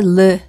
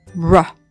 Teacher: 이 혀를 목구멍 쪽으로 구부려서 입천장에 닿지 않도록 구부려서 나는 르 소리는 이 R 소리입니다